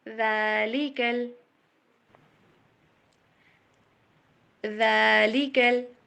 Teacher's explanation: لی کو لمبا نہیں کرنا، اور کاف کو لام کے ساتھ ملانا ہے، بٹ لام کے اوپر جا کے اسٹریس نہیں دینا، یہ جزم ہے، تشدید نہیں ہے، زور نہیں لگانا